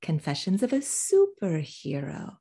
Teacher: superhero it's superhero confessions of a superhero you see how low you hear how low my tone goes at the end i'm stressing the first part and de-accenting the rest super hero